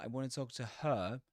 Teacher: at the end of a sentence, you may not hear the h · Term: weak forms